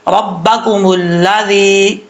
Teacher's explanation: ربکم الذی، لال بغیر سیدھی کے ساتھ پڑھا جائے گا، اس کا مخرج ہے زبان کا سرا اوپر والے دانتوں کے اندرونی کنارے سے لگے تو زال پڑھا جاتا ہے